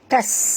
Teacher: Hi fa la dua harakat, tasta'jiluh. Fala tas, huruf sin jaga safir. Tas.